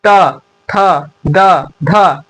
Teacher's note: त वर्ग त बोलते समय जो हमारा जीभ है वो दांत में सट रहा है। देखिए त, थ, द, ध।